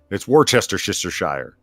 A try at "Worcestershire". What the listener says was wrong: Where'd you get the Shire? There's no shire. There's no Shire.